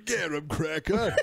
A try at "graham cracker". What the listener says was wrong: Graham cracker. A garum. That would be if it was like G-A-H-R-A-H.